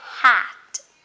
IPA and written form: hæt (hat)